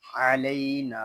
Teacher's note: نون کو ہم ایک الف تک کھینچ کر پڑھیں گے کیونکہ یہاں پہ الف مدہ ہو رہا ہے.